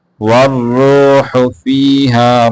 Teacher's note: را کو موٹا کر کے پڑھیں گے، ہا کو واضح کریں گے